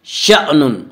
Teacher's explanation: شأن کو جھٹکے کے ساتھ پڑھیں گے